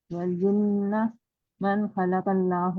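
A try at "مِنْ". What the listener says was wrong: मन या मिन? हाँ, आगे भी मिन है तो ये भी मिन ही है।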